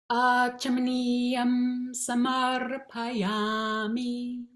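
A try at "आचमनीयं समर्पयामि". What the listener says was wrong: Samarpayami. You're staying on the akara. Just do that one. Just do that. Samar.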